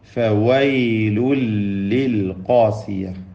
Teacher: താഴെ ചുണ്ടിൻ്റെ പള്ളഭാഗം, മേലെ മുൻപല്ലിൻ്റെ അഗ്രം, അതാണ് ഫാഇൻ്റെ ഉച്ചാരണം.